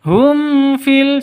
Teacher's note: cara bacanya jelas terang tidak boleh dengung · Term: izhar syafawi